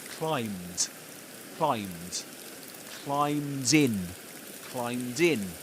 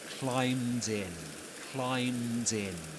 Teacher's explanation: as the next word begins with a vowel sound, he connects the two words joining the final consonant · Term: catenation